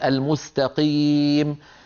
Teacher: الابدالات كلها لا تصح خلط القافيه بالغين مثل الاخواننا في السودان بدل ما يقوله قام يقولوا قاف مخلوطه بالغين